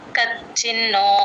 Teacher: క కి చ ని జాయిన్ చేసి చెప్పాలి మహాప్రాణం లేదు ఓన్లీ ఒత్తు మాత్రమే ఉంది మెత్తగా చెప్పాలి. కచ్చిన్నో అంతే చ కి కూడా నాకి నాని జాయిన్ చేసి